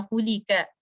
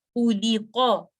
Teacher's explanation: آپ اس کو کا نہیں پڑھیں گے. تو اس لیے آپ اس میں بیک آف دا ٹنگ کو ایلیویٹ رکھیں گے اوپر اٹھا کے رکھیں گے. تو اس کو پڑھتے وقت آپ نے دھیان رکھنا ہے کہ قاف جو ہے یہ ہیوی لیٹر ہے یہ ڈیپسٹ پارٹ آف دا ٹنگ سے آ رہا ہے.